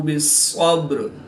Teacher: صاد حروف مستعلیہ میں سے ہے تو اس کو پورے یعنی موٹا پڑھیں گے · با ساکن ہے تو یہاں پر قلقلہ صغریٰ کر کے پڑھیں گے